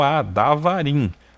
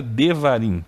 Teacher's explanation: o hebraico reduz a vogal passando a um shiwa vocálico